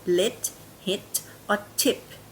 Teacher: Thai people usually pronounce these words a little bit shorter than native speakers. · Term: short E or lax E